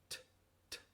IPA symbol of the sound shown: t